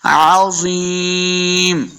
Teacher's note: ज़ा को मोटा पढ़ेंगे, ज़ा हुरूफ मुस्तालिया से है